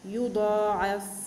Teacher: الضاد، مرتبته عليا، والسبب أنه مفتوح